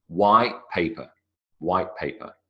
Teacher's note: what happens to the T sound it vanishes white paper white paper I don't make a t sound 10